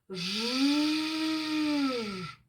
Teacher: бічні крає язика притиснуті до верхніх корінних зубів а посередині язика йде теплий широкий струмінь повітря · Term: звук ж